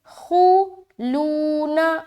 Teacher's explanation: ٹھیک ہے, آگے خلون, خوا پیش خو موٹا کر کے ادا کریں گے. خو لون, لو میں واو مدہ اور نون کو جلد ادا کریں گے